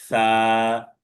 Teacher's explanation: সামনের উপরের দুই দাঁতের আগার সাথে লাগবে, নরম ভাবে উচ্চারণ হবে।